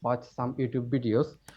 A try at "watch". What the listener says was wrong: Again, watch has no h sound in there. Watch, not watch, not watch. Watch, watch.